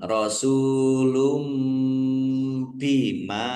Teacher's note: Domah tanwin bertemu dengan huruf bacaan iqlab dibaca membalik. Tanwinnya dibaca ba ya dibaca mim